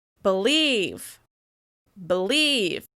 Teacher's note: The first syllable is shorter, quieter, and lower in pitch, with less exaggerated mouth movement. The second syllable is longer, louder, and higher in pitch, with more obvious mouth movement. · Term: stressing the second syllable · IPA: /i/